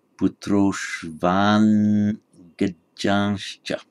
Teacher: Does the n change its quality with the following g? No, it doesn't. It remains as a pure N. So it would be correctly pronounced as Putroshvan Gajanscha.